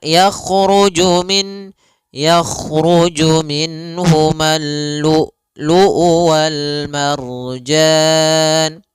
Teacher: Kalau syiddah adalah tertahannya suara. Maka lu luu harus tertahan. · Yang pertama adalah sifat jaharnya, dan kedua sifat syiddahnya. Jahar itu tertahannya nafas, kalau syiddah adalah tertahannya suara. Maka lu'u harus tertahan. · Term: hamzah yang disukunkan